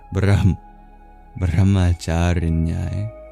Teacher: And that H does make a sound too, it's voiced.